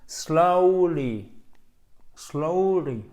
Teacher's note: C'est une diphtongue, c'est un E qui va sur un OU.